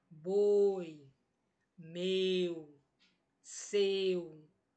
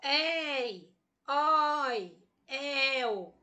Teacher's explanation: Percebe que eu não abro tanto a minha boca, eu fico mais fechado. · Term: ditongos fechados